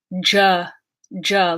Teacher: consonant to the beginning the voiced stop alveolar consonant duh so when you mix duh with sure you will get this juh juh like in judge sound